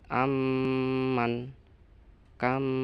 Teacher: Mim mati bertemu mim. Ini juga mim mati bertemu dengan mim harus dibaca mendengung. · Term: idgham misli